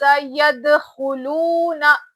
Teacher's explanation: ख की आवाज में एकदम खुरदुरी खुरदुरापन रहता। ख की आवाज एकदम क्लियर आना और ख को मोटा पढ़ना है। · خا کی آواز میں ایک دم کھردرا پن رہتا، خا کی آواز ایک دم کلیئر آنا، اور خا کو موٹا پڑھنا ہے